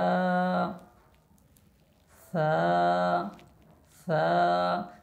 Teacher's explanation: সা উচ্চারণ করার সময় জিহ্বার আগাটা উপরের দুই দাঁতের আগার সাথে যেন লাগে